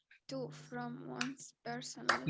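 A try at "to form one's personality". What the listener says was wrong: لا, to form مش from.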